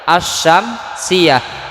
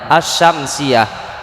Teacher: Jadi bunyi alif lamnya, tulisan alif lamnya ada, tetapi ketika dibaca hanya ada tulisannya saja, tetapi ketika dibaca suaranya enggak ada alif lamnya. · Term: alif lam idgham